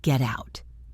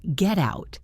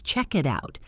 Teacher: When a word ends in a consonant and the next word starts with a vowel, the consonant jumps to the next word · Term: linking